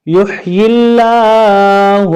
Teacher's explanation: اللہ تعالیٰ کے نام سے پہلے زیر آ جائے تو اس کو باریک پڑھیں گے، اگر اس سے پہلے اسلام سے پہلے زبر ہو یا پیش ہو تو پر پڑھیں گے۔